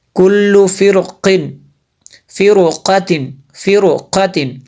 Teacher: را سے پہلے جو ہے زیر اصلی ہے لیکن اس کے بعد حروف مستعلیہ میں سے قاف ہے، اس لیے را کو پر پڑھیں گے